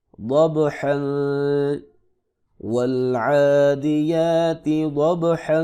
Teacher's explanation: با ساکن ہے، حروف قلقلہ میں سے ہے، یہاں پہ قلقلہ ہوگا۔